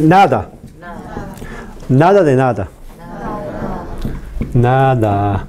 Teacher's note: Este N es consonante nasal ápico alveolar.